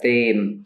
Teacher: It's not aspirated. You don't need to aspirate the T. So it's not like ta. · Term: Vietnamese T